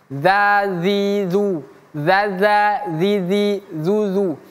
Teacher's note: Dzal itu ujung lidah bertemu gigi seri atas.